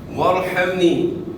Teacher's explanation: را ساکن سے پہلے زبر ہے, تو را کو موٹا ادا کرنا ہے, ہا کو اپنے مخرج سے ادا کرنا ہے, ہا کو ہا سے تبدیل نہیں کرنا.